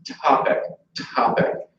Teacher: that first T topic has is aspirated but the p and the C there are not aspirated because there's not a stress vowel after it